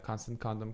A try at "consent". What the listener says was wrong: It sounds like you're saying constant condom, like I think it's called consent. Not constant condoms.